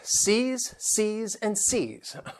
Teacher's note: You have that long E, and it ends with that Z sound.